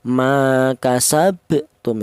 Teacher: Apa artinya qalqalah? Qalqalah itu artinya ada suara pantulan. Jadi cara bacanya huruf ba yang mati ini dipantulkan